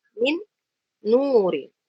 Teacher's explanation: Maka nun yang pertama kita masukkan ke nun yang kedua. Disertai dengan gunnah. Kita baca min nur.